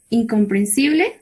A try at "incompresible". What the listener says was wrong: No, no hay la N. Incompresible.